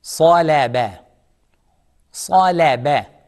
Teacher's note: In this word, sad is heavy, lam is soft, ba is soft.